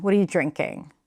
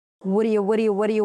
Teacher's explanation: What are you drinking? Because what are you and what do you when reduced they sound the same